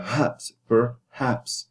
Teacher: Per is unstressed because the stress is on the haps, perhaps. So as a result, you put the unstressed schwar for the per.